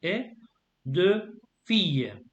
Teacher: I don't join them together. The T is silent.